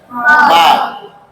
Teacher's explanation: با کا مخرج دونوں ہونٹ کا تری والا حصہ